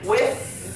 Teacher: when you say width you can't feel anything in your throat